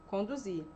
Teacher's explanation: Então, a tonicidade está no zi, logo, naturalmente, vai continuar no zi.